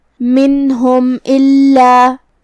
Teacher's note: یہاں حکم ہے اظہار شفوی. ہم میم کو ظاہر کریں گے اور بغیر غنہ سے یہ حکم کو ادا کریں گے · کلمت الا میں لام پہ تشدید ہے. 2 حرف کے برابر ہمیں لام کو پڑھنا ہے کیونکہ تشدید کی اصلیت 2 حرف ہوتی ہے.